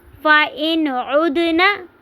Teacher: نون ساکن کے بعد عین آ رہا ہے تو ہم اس کو نون کو ظاہر کر کے پڑھیں گے، آواز کو ناک میں نہیں لے کر جائیں گے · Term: اظہار